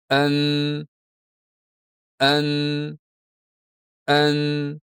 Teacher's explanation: Ikkinchi yarmini esa burun boʻshigʻi orqali bajariladigan harakat hosil qiladi. Yaʼni havoni burun boʻshigʻidan chiqarish kerak boʻladi. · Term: gʻunna